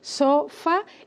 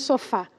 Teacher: tenemos la sílaba tónica, que es la última